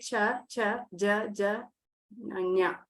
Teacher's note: the tongue will touch the back of your top of the mouth, the palate.